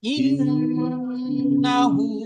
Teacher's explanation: ইন, এখানে যখন গুণনা করবো তখন আলিফের সাথে নুনটাকে জড়িয়ে নিয়ে ইন বলে টান দেবো, কিন্তু না বলে টান দেবো না।